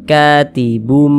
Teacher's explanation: Jangan kita baca katibun, jangan, tapi dirubah menjadi mim, katibum, seperti itu. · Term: menjadi huruf mim